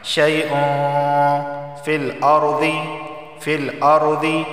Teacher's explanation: اخفا والا غنہ ہوگا، یعنی زبان کی نوک اوپر کے تالو سے نہیں لگانی اور ناک سے پڑھنا ہے